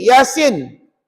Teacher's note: Dia kena ya tu 2 harakat, sin 6 harakat.